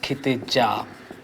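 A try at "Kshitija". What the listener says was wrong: Sir, you missed the S.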